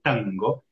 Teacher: la N gutural, que le llamamos, que está aquí en la garganta, bien en el fondo, que es la N de tango.